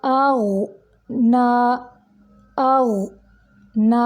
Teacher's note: नून के ऊपर खड़ी है और खड़ी की अदायगी भी 2 हरकत अरबिया जितनी होती है, यानी 2 सेकंड जितनी।